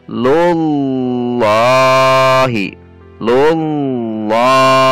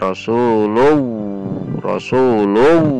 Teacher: Kemudian berbarengan dengan itu naikkan pangkal lidah beserta sekeliling lidah sebagian besar sehingga terdengar tafhim atau tebal · Jadi ujung lidah tetap di titik lam, tidak dilepas. Dengan demikian, insyaallah kita akan menghindari dari cara mengucapkan lafaz Allah dengan huruf wawu.